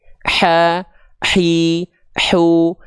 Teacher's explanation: dia dilafalkan tepat dari bagian tengah tenggorokan kita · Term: wastul halqi